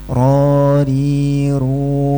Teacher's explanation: Sekarang ujung lidah bagian punggung nempel ke gusi dari gigi sari atas.